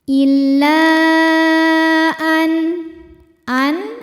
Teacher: Illa an ada hukum idhar halqi sebab ada nun sukun menghadapi huruf halqi atau huruf tenggorokan yaitu hamzah, maka nun dibaca dengan n, jadi masih tetap n dan jelas ya, tidak ditahan. Illa an hukumnya adalah mad badal sebab ada hamzah yang dipanjangkan.